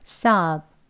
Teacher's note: 여기서 좀 편하게 발음을 하실 수 있는 방법은 비 발음을 잘 해주셔야 하는데요. 사브라고 할 때 브 소리를 밖으로 으 소리를 내지 마시고요. 사브 예, 공기만 나가는 것처럼요.